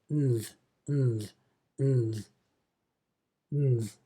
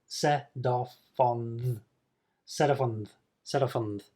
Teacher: On the. And then it becomes a kind of blended sound of nth